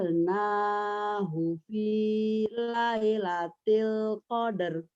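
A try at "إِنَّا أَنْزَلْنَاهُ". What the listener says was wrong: Inna kurang penekanan aja Ibu ya, udah bagus. Inna anzalnahu fi lailatul qadar. Ibu udah bisa, cuman penekanannya masih, namanya juga lagi belajar kan. Tekan coba.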